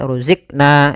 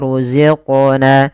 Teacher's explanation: Kesalahan yang terjadi adalah dia tidak memantulkan. Misal ruzikna, ini tidak memantulkan. · Kemudian pada lafal qaf ada bacaan qalqalah. Yaitu suara qafnya dipantulkan.